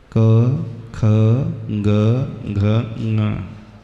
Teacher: कवर्ग होता है जहा हमारे कंठ का प्रयोग होता है